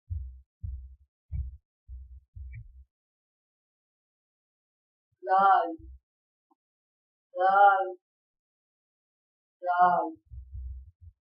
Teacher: زبان کی نوک جب اوپر والے اگلے دو دانتوں کے کنارے سے لگے تو دال ادا ہوتا ہے